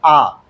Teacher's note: इसका मतलब क्या हो गया कि जब आप पूरे मुंह को खोलते हैं बोलते समय, जैसे आ बोलो तो आ में क्या हो गया? पूरा मुंह खुल गया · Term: विवृत स्वर